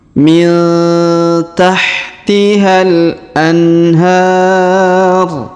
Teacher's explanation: Huruf H kita panjangkan 2 harokat karena ada alif kecil di atasnya.